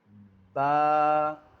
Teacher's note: با جو ہے وہ دونوں ہونٹوں کے تر حصے سے ادا ہوتا ہے۔